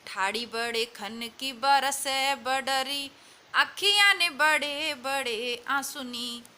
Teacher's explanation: इस सवैये की इस अंतिम पंक्ति में मूर्धन्य ध्वनि और ट ड ढ की 6 बार आवृत्ति हुई है। इन कठोर मूर्धन्य ध्वनियों का अनुशासन कवि ने अपने विशिष्ट ढंग से किया है।